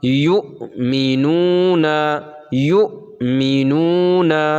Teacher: پڑھنے میں جھٹکا ہوتا ہے، یعنی جس حمزہ پر ساکن ہو جزم ہو اس کو پڑھنے میں جھٹکا ہوتا ہے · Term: حمزہ ساکن